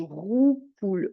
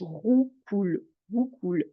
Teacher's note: c'est un R qui est au fond de la gorge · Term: R qui racle